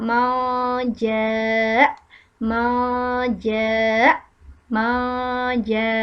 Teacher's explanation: Posisi lidah menuju ke nun sukun, nun di mana letaknya di torful lisan di ujung lidah, kemudian ke jim. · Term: ikhfa hakiki